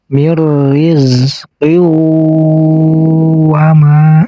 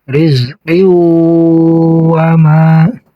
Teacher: Ditahan dulu 2 harokat dan menggunakan dengung. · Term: idgham biguna